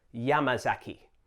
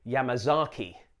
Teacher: try to put the stress on the first syllable, Yamazaki. This will help combat the Anglophone tendency to say Yamazaki.